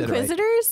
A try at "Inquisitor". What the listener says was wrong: You're putting a weird emphasis on it. Inquisitor. You're putting the wrong emphasis on the wrong syllable.